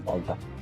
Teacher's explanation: la R esdevé L seguida de consonant